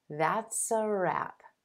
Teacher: that s sound linking over in front of the article